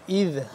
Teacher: زبان کی نوک کو ذرا سا باہر کی طرف دونوں دانتوں کے درمیان میں سے باہر نکالیں گے تو ذال ادا ہوگا نرمی سے۔ اذ ہدیتنا، ہدیتنا وہب لنا، یہ ہا، یہ جو